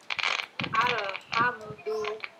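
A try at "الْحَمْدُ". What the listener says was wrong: Do-nya pendek.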